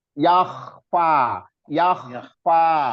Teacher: makhorijul hurufnya adanya di atas, tenggorokan paling atas